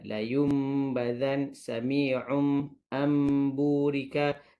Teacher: Iqlab bermaksud bertukar. Maksudnya daripada nun mati bertemu dengan ba, jadi mim bertemu dengan ba.